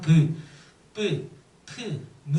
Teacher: 입술이 붙었다 떨어지면서 나는 소리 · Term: 양순음